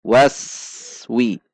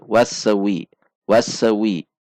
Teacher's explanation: Wawu fathah masuk ke sin sukun. Sin sukun dibaca tidak tertahan. Waswi. Antara aswi tidak ada jeda.